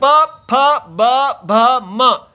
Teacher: प बोलते ही नीचे का होठ ऊपर की तरफ पूरा स्पर्श करता है।